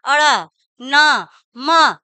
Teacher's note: हमारे नाक और मुख से दोनों से हवा बाहर हवा के साथ वर्ण निकल रहा है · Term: अनुनासिक, नासिक वर्ण